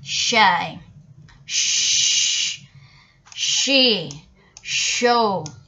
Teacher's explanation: palato-alveolar, tongue blade and the back of the alveolar ridge, the tip of tongue down behind the lower front teeth. For example, we can say in words shy, shh, she, show.